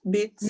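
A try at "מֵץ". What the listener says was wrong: No, meats. It's a mem. Meats.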